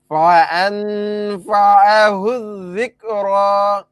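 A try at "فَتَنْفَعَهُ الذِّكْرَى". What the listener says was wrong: আবার ফান হইলো কেন? ফাতাং, তবে দেখেন ভাই, এই গুণটা নাকের ভিতর, এটা একবার অস্পষ্ট গুণ না। ফাতাং, ফাতাং, তাং,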